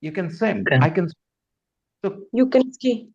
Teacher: in the positive sentence can does not get any stress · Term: no stress for can